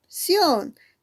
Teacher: Tiene, profesora, 3 sílabas. ¿Y en dónde está la mayor fuerza de voz? Ah, profesora, en sion. Por lo tanto, esa sería tu sílaba tónica.